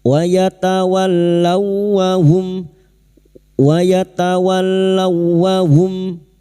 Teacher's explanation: Wau sukun masuk pada huruf wau yang bertasdid tanpa ditahan lama-lama. Hanya masuk pada huruf wau berikutnya.